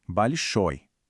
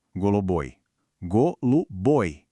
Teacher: E com os adjetivos masculinos acontece uma coisa curiosa. Se a sílaba tônica caer justamente na terminação, ela deixa de ser ii e vira oi.